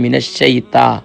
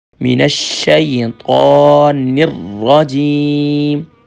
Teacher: تا نہیں ہے طا ہے، طا موٹا ہوگا